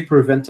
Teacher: Por que a gente não aspira esse p aqui? Porque a sílaba tônica é a segunda.